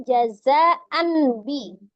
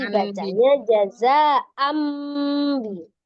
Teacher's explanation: nun. Merubah bunyi nun sukun menjadi mim sukun, dari an menjadi am. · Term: iklab